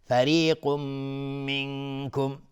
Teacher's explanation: قاف از حروف استعلا غلیظ تلفظ میشه. تنوین بعدش میم ادغام با غنه.